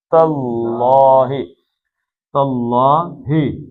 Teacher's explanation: تا باریک پڑھنا ہے، لیکن اللہ کا لام موٹا پڑھنا ہے